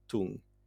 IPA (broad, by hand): tuŋ